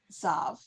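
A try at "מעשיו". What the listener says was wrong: Vav. Not a vet. A vav.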